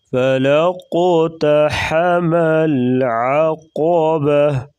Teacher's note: قلقلہ کریں گے اور قاف کو پر پڑھیں گے